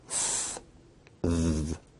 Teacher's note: Interdental sounds are produced with the tongue in between the upper and lower teeth